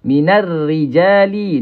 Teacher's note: alif lam syamsiyah ra ni dibaca dengan nipis.